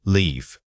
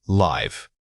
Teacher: This is a classic case where vowel duration makes or breaks clarity. If you use a short I sound when saying leave, you risk sounding like you were saying live. Remember to stretch that middle vowel out for true distinction. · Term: vowel length